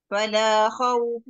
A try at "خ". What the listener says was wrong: Ah, kho tu kena jelas sikit. Dia bukan sebab kita nak tolak kuat tau kho ni jelas atau tidak. Tetapi sebab makhraj kho tu tak tepat. Kalau kita sebut tepat, dia tak payah tolak kuat pun dia dah bunyi kho sebenarnya.